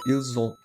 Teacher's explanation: quando tem um S no final e começa com vogal em outro, fica um som de Z. Aí fica ils ont.